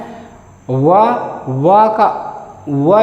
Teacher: इसमें जो है कि दांत और ओष्ठ, इसमें दांत और ओष्ठ की सहायता से ये व का उच्चारण होता है, इसे दंतोष्ठ बोला जाता है।